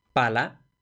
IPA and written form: ˈpala (pala)